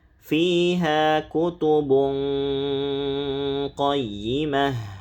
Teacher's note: tanwin bertemu qof. Ah, ini tebal ikhfanya tafkhim.